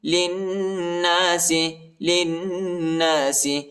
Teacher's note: لام کو نون کے ساتھ ملائیں گے اور غنہ کریں گے